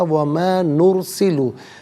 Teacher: نرسلو میں را ساکن ما قبل نون پر پیش، تو را ساکن کو پر کر کے پڑھا جائے گا